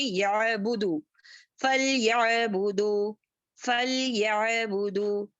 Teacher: आइन को पढ़ते समय जो है झटका नहीं देंगे और आइन को मोटा नहीं करेंगे। यअबुदु इस तरीके से भी नहीं, यअबुदु इस तरीके से भी नहीं, झटका नहीं देंगे, इसको आराम से पढ़ेंगे।